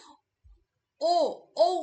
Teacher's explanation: দেখ ওষঠটা কিন্তু বিম্বাকৃত হয়ে যাচ্ছে। অর্থাৎ ওষঠের সাহায্য লাগছে। আবার ও মানে স্বরধ্বনিটা কিন্তু কন্ঠ থেকে আসছে।